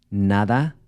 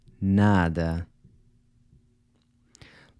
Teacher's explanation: So you’ll notice that the final “a” in these words is pronounced /ɐ/ as in “Cuba” or “sofa”, which is represented by this upside down “a” symbol. So whereas in Spanish you would pronounce the final “a” with an /a/ sound as in “na-DA”, in Portuguese you would say “na-dɐ”